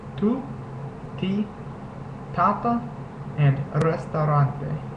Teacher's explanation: in Spanish you make the T Sound by putting your tongue against the back of your front teeth · Te is pronounced like the English T, except notice that when you say English T, your tongue goes against the roof of your mouth, right behind your top front teeth. In Spanish, you make the te sound by putting your tongue against the back of your front teeth.